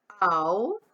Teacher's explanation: E o decrescente, a vogal vem primeiro e a semivogal vem depois. Ao, ó, o quase some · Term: ditongo decrescente